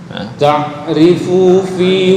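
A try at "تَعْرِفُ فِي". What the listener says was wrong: Langsung ta'rifu fi, bukan ta'rifu fi. Fu kepanjangan. Ainnya udah agak mending. Ta'rifu fi.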